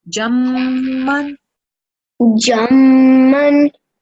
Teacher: Mim has a shadda, so we're going to press down on the sound and hold it for 2 seconds.